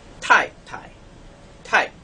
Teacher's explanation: we have to bring the falling tone up higher. So it's going to be a high falling tone and then a low falling tone.